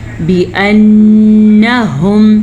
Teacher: नून पे गुना अदा करेंगे। नून पे शद है